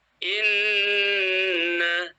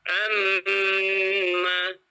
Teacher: kadar panjangnya gunnah ini untuk mim dan nun itu 3 harokat. Misalnya inna, 3 ketukan maksudnya.